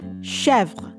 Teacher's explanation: We have che with the accent grave over the E, which makes the E sound open, and then we have V-R-E, Chevre, and the first syllable of the name is probably the most accented syllable, with the end of the name, the vre, syllable at the end being the unstressed syllable